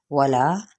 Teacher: वाव होंठों की ना तमाम गुलाई के साथ